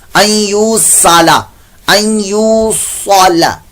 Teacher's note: پیش ہے تو واو مدہ لمبا بھی کریں گے، ان یوصلا، صاد کی جگہ سین کی آواز نہیں نکالنی